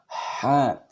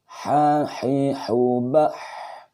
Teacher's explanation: Tempat keluar huruf H adalah tengah tenggorokan bagian tengah. Sifatnya atau karakternya adalah nafas berhembus. H. Kemudian suara tidak tertahan.